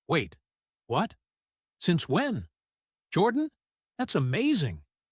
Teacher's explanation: This burst of reaction is full of short, high, quick rises. · that's amazing gets heavy stress right on the word amazing stretched and lifted because that's the emotional peak of the whole sentence. · Wait, what? jumps upward fast, showing genuine shock.